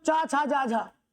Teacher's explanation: स्पर्श तो है ही साथ में स्पर्श संघर्ष भी है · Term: स्पर्श संघर्षी व्यंजन